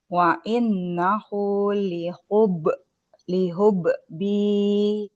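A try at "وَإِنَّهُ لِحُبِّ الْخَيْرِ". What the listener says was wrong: Lihub bil, ketika dia tasydid maka tidak ada suara pantulan. Lihubbil khairi.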